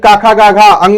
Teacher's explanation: क वर्ग का उच्चारण कंठ से।